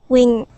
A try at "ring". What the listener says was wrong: you're saying wedding wing. okay? And you're going to a W sound instead of an R sound, all right?